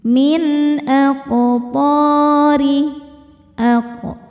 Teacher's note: Karena nun sukun bertemu dengan huruf halqi atau tenggorokan yaitu hamzah. Cara bacanya nun dibaca jelas. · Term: izhar halqi